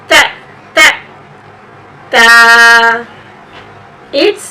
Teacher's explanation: the point of articulation of T is tip of the tongue touching upper incisors